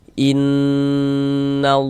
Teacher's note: bagian inn-nya itu suaranya itu kita tahan, kita panjangkan sebentar ya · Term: ghunah